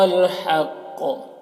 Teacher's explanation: وهو الحق یہاں پر بھی قاف کو پر پڑھیں گے اور وقف کی صورت میں قاف میں قلقلہ ہوگا